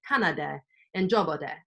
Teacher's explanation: it looks like the imperfective comes with hi-lo